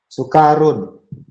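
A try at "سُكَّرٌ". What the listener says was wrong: Sukarun, ada tasdidnya.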